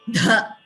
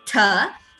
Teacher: If you do not apply Ghosha to dha, there is a tendency for it to be heard as tha itself.